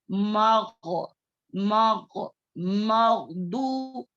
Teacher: मीम जो है बारीक पढ़े जाने वाले हुर्फों में से है, और गैन जो है मोटे पढ़े जाने वाले हुर्फों में से है।